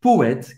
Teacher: Ele acaba no T, o E no final não se pronuncia.